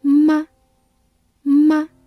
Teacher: 吗 is a neutral tone, so you must pronounce it very lightly.